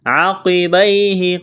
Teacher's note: قاف کو موٹا کرنا ہے، یا لین ہے، اس کو کھینچنا نہیں ہے